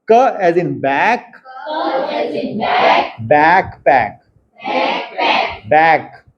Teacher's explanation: बैक of the tongue मतलब root के पास वाला टंग जो है वो हमारे सॉफ्ट पैलेट को टच कर रहा है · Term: व्हीलर